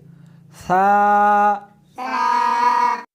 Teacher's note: اس حرف کو زبان کو دونوں دانتوں کے درمیان رکھ کر پڑھیں گے۔